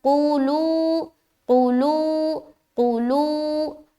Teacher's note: لو میں کھینچ رہے، قو میں نہیں کھینچ رہے۔ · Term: واو مدہ